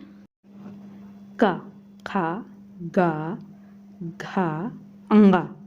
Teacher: अर्थात गले से। इनको उच्चारित जब हम करते हैं मुख से बोलते हैं तब इनकी आवाज गले से आती है। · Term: कंठ